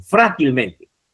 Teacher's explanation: Hil sería otra átona y la sílaba tónica sería fra